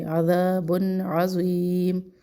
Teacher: تنوین کے بعد عین ہے تو اظہار کریں گے عذاب عظیم، اور بن کو لمبا بھی نہیں کرنا.